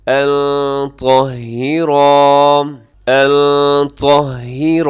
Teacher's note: نون ساکن کے بعد طا ہے، حروف اخفا میں شامل ہے، اب یہاں اخفا کیجیے گا